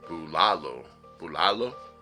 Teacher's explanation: someone told me that the accent was more on the second syllable